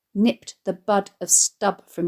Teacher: The verb nipped suggests a quick, clean movement, and the rapidity of his removing the cigarette stub from his mouth is enhanced by more plosive consonants